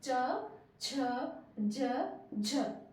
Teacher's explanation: तालू च छ ज झ हमारी जीभ उसको टच करती है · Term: तालव्य